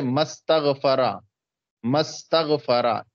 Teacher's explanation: تو حمزہ یہ ملانے کی صورت میں گر گیا پڑھنے میں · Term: حمزہ وصلیہ